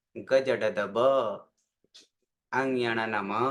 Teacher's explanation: જ્યારે બોલીએ છીએ ત્યારે પ્રાણવાયુ ઓછો વાપરવો પડે. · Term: અલ્પ પ્રાણ